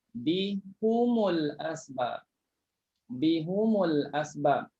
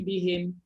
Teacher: ha bersambung dengan mim, depannya ada huruf yang mati, maka ha itu dibaca baris depan.